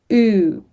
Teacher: Thank you ends on that long vowel sound, oo, which requires sustained vocal tension for 200 to 400 milliseconds. There's no stop or closure of the airflow, no muscular snap at the end